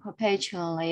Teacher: stress is on the second syllable